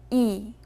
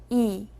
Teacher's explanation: 이는 입을 조금만 벌리고 혀를 가장 앞쪽 그리고 위쪽에 놓고 내는 소리예요.